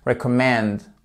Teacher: Vous voyez le pauvre E là au milieu, il est un peu compressé entre ces deux syllabes très fortes, et on entend à peine, mais on entend tout de même. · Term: schwa